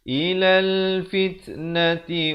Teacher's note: Di sini alif lam qamariyah, lamnya dibunyikan.